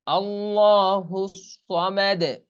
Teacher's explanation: সামাদ এই দালটা কলকলা হবে। দালটা সামনে মানে সাকিন করলে তখন হালকা জবরের আভাস পাওয়া যায়, কিন্তু জবর সরাসরি উচ্চারণ করা যাবে না, লাফ দিয়ে উঠবে কিরকম, আল্লাহু সামাদ।